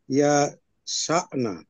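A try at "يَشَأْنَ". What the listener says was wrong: ইয়াশানা একসাথে বললে, হ্যাঁ বলেন। আরো দ্রুত মানে ইয়াশানা একসাথে।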